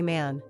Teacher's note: the English vowel here is tighter and a little more nasal. Try stretching the sound out when you say man.